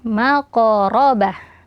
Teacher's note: maka dibaca Dua harakat karena Mad thobii kemudian setelahnya maqoraba ya Q Sukun diqalqalahkan dan ditebalkan · qaf sukun diqalqalahkan dan ditebalkan ya, maqarabah, dan hanya tanya juga ketika waqaf dibaca menjadi ha, maqarabah.